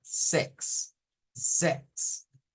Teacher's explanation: se hace un sonido una E abierta